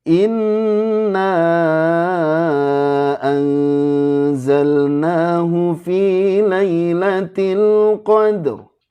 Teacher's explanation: ra-nya tebal karena diawali fathah